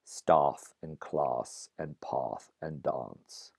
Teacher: that short A was backed and also lengthened a little bit when it appeared before voiceless fricatives and before some nasal consonants. So staff and class and path and dance come to be pronounced staff and class and path and dance. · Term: standard British English way